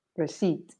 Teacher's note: The P is silent.